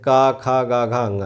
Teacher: तो जैसे स्पर्श, का वर्ग कंठ से स्पर्श होकर आती है